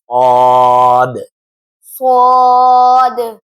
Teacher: صاد منہ بھر کے آواز کے ساتھ دانت بند کریں گے، منہ گول کرنے کی کوشش نہیں کریں گے، ایسا صاد غلط ہو جائے گا۔